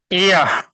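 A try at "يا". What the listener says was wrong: ওটা টান দিয়ে বলতে হবে, ইয়া মিম।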